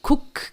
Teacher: O verbo cook, que é cozinhar, cook, termina com K, o som do K não é vibrado